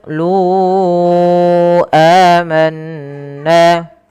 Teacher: pada lafal qooluu luunya kita panjangkan empat harakat teman-teman karena di sini ada bacaan mad jaiz munfashil yang di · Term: mad jaiz munfasil